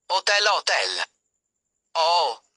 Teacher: In Italian h is not pronounced. It has no sound of its own